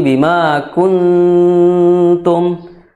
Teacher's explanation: Kemudian kuntum, ya, itu di situ ada nun sukun bertemu tak, maka hukumnya adalah ikhfa, ya. Ikhfanya ikhfa tarqiq, jadi tipis. Jadi jangan sampai bima kuntum, tapi bima kuntum, ya, tipis.